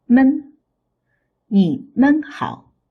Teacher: It's a suffix, has no tone. The sound is short and light.